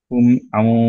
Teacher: back of the tongue elevated, সদের মাখরাজের কাছে আমাদের টাংটা suspended, এবং আমরা হচ্ছে গুণার জন্য টাইমটা ধরে রাখলাম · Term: ইকফা